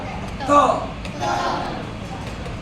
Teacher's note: दांत से जब भी त बोलोगे ना तो दांत पर पहले जीभ जाके मारता है फिर बाहर निकल जाती है आवाज